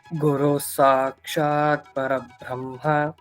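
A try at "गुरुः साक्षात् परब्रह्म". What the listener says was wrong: there is no Mahaprana. Parabrahma, Alpa Prana. Parabrahma.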